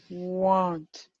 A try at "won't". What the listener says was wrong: You're moving your lips. You're moving your lips neutral because you actually physically can't get an O sound if you relax your lips. So I won't, and I'm rounded the whole time.